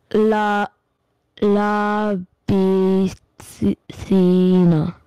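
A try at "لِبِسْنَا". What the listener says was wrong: Okay, what is the sound of ba kasra? is the correct one, but when you are reading the word, you are stretching the sound of B. So you are saying La B Thina. Is it correct? But that is Ba kasra B, but you are saying B instead of B.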